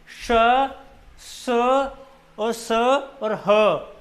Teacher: इन वर्णों का उच्चारण करते समय मुंह से हवा के रगड़ खाने से उष्मा पैदा होती है · ऐसा लग रहा है कि हवा का थोड़ा सा रगड़ा लग रहा है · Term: उष्म व्यंजन